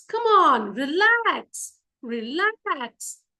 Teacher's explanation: In these cases, the stress is always on the second syllable.